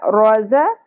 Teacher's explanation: ز کو شدت اور سیٹی کے ساتھ ادا کیا جائے گا. روز قوف پر ہوگا اور نرم تالوں سے ادا ہوگا.